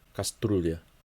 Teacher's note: there are two soft consonant vowel pairs at the end of the word, ryu and ля, кастрюля.